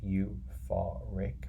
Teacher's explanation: got three syllables three sounds so it's you far Rick and the stress the loudest part is in the middle